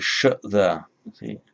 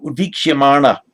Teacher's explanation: And by the way, the suffix mana, the n there becomes retroflex because of the sh there. See, it has an effect on later on in the word, provided there's nothing to block it.